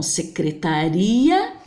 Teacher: secretaria eu separo, formando assim um hiato